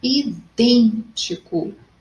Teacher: Idêntico, antepenúltimo ou a terceira sílaba mais forte. Então, é a minha proparoxítona.